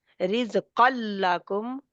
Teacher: मुकम्मल इदगाम होगा, पूरे का पूरा उसमें मर्ज हो जाएगा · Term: इदगाम कामिल